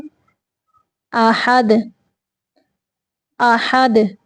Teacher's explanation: دال جو ہے اس کو ساکن کرتے ہوئے کلکلا کرنا ہے، اس کو حرکت دینی ہے